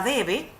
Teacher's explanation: fíjense que la mayor fuerza o intensidad en la palabra debe se hace en la d